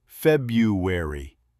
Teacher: Most Americans say February. That first R almost disappears.